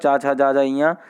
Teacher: चा वर्ग जो होता है तालु से ही बोला जाता है